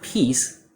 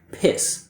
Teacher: So this is a really common word, and the mistake that I hear is in the vowel sound. So instead of the E like she, a lot of students will pronounce it with the I like sit